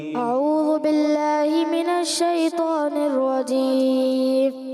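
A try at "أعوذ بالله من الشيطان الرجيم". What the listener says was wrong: اعوذ ذال کی ادائیگی پیش کو کلیئر کریں دوبارہ.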